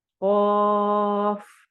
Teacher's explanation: الف مدہ ہو رہی ہے، اور فا آگے ہم اس کو ساکن کر رہے ہیں نا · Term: مد لازم حرفی مخفف